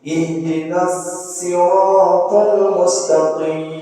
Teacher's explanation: riwayat Qumbul itu membaca lafaz as-sirat itu dengan sin. Jadi sirat, bukan sirat.